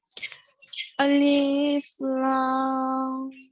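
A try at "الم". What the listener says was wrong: Now just make sure Alif is not lengthened. Huh? Don't say Alif. Alif is very short.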